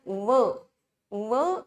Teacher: व हा जो वर्ण आहे तो दंत्योष्ठ आहे, म्हणजे खालचा ओठ आणि वरचे दात असे दोन्ही आपल्याला व चा उच्चार करताना लागतात.